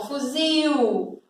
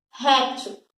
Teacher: Então, fuzil, ele é forte. E esse il átono quer dizer que ele é o fraquinho. Ele tem o som mais fraco. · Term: il tônico